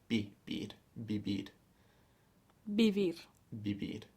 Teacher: it's actually a little bit in between b and a v it's quite a soft B so b b and how is in English live yeah but